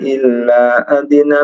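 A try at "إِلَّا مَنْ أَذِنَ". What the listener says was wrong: Illa man adina, ada mannya. Illa man.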